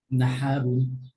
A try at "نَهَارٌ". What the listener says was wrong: না, হা, হা একটু মুখটা একটু বেশি করে ওপেন করতে হবে, তো পিছের দিকে চলে গেছে টাংটা, হ্যাঁ? নাহারুন। না, নাহা, হা, হা। রটা খালি হেভি, হ্যাঁ? নাহারুন, রু, রুন।